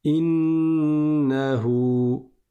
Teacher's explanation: Le noun, il y a une shaddah dessus. Et par conséquent, on reste longtemps dessus parce qu'il y a une runnah. Innahu. Et là, vous entendez une prolongation.